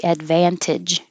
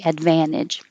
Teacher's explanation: you can say this with a t advantage or without the t advantage